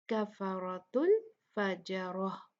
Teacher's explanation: کاف اور فا لائٹ حروف ہیں را ہیوی ہوگا · فجر جو ہے یہ لائٹ پڑھیں گے پھر را ہیوی ہوگا اور پھر گولتا کو ہا میں بدل کے ہا ساکن کر